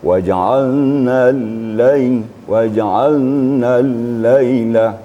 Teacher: Syiddah artinya suara terputus, sedangkan rakhawa suara mengalir. Tetapi pada huruf lam di tengah-tengah, tidak terputus suaranya dan juga tidak terlalu mengalir, sedang-sedang saja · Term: tawasud